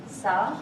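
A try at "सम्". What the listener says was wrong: Sam. You cannot say sa and im. The sound is sam.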